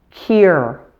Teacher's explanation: The main thing to watch out for in this word is to make sure to insert a Y sound before the U